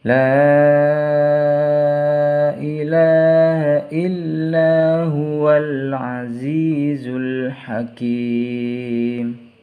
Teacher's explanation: Lanya di sini harus dibaca panjang karena mad bertemu dengan huruf alif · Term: mad jaiz munfasil